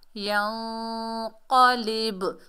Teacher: با حروف کلکلہ میں سے ہے، ڈبل ساؤنڈ آئے گی، کلکلہ پیدا ہوگا